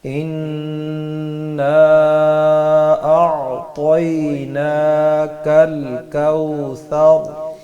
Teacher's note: پہلے غنہ کریں گے، اس کے بعد مد کریں گے، ٹھیک ہے؟ طا کو موٹا پڑھیں گے، اسی طرح ثا میں سیٹی کی آواز نہیں آئے گی اور را کو پر پڑھیں گے